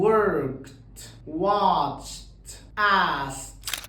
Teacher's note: فلو اخر صوت بقى فويسلس وضفنا الاي دي، في الحاله دي برضو بحذف الاي، ما بنطقهاش اطلاقا، بكتبها بس. بقلب الدي اخليها تي، فبقول worked watched asked.